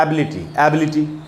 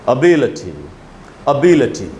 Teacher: ब के बाद जो ई है यानी बी पर ज़्यादा स्ट्रेस है, असली स्ट्रेस है। तो हमको बोलना चाहिए इस वर्ड को अबिलिटी, अबिलिटी, एबिलिटी नहीं बोल सकते, अबिलिटी। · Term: सिलेबल स्ट्रेस